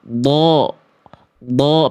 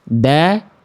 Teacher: Kalau yang datar itu nanti huruf dal nih. Kalau huruf dal, pangkal lidahnya turun nih.